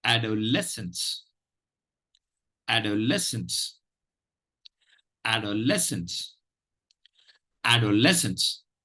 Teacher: less takes the primary stress add takes the secondary stress and we have two stress syllables · The word is adolescence, and there are 2 stress syllables. There is the secondary stress is on the first syllable, the primary stress is on the third syllable.